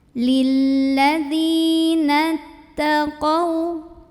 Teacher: Jadi nunnya jangan dipanjangin ya. Pokoknya dari nun langsung kita tekan ke ta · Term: hamzah wasol